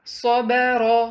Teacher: صاد کی مثالیں: اس ورڈ میں صاد ہیوی ہے، با لائٹ ہے، را ہیوی ہے کیونکہ فتحہ کے ساتھ ہے